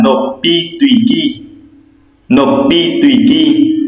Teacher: Các bạn thấy mình phiên âm là cách phát âm là nộp y tùy kỳ, nhưng khi đọc các bạn nhớ đọc nối lên là nộp bi tùy kỳ